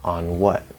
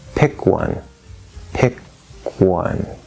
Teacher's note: So you bring the tongue up, you bring the lips out, on what? And so you hold that N until the lips are out, and then you release the N and open the W, on what? Or we can say, pick one, pick one.